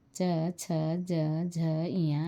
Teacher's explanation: च, छ, ज, झ, इया, य तथा श का उच्चारण स्थान तालु है, इसलिए इन वर्णों को तालव्य वर्ण कहते हैं।